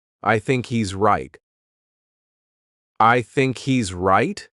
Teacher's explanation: There's no H happening here.